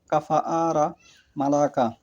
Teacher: ছোট কাফ বর্ণটি জিহ্বার মূলের একটু পরে ও ওই বরাবর উপরের তালু হতে উচ্চারিত হয়।